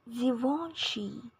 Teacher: The next brand is Givenchy in both American and British English, stressing the third syllable.